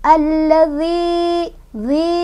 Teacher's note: Alla, alladzi, zi ketemu sama mad tabi'i, sebabnya karena ada ya sukun didahului oleh huruf berbaris kasrah di huruf dal. Cara bacanya panjang dua harokat.